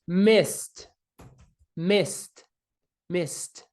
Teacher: Vamos ao verbo miss, miss. Esse verbo, com esse S no final, não faz com que as cordas vocais vibrem.